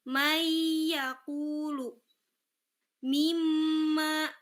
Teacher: Nah, ketika masuk ke huruf ya, huruf nun, mim, wau, lam ataupun ro, nun matinya itu sudah tidak terdengar lagi. Sudah tidak ada bunyi n, tapi dia masuk ke huruf setelahnya tadi. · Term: idgham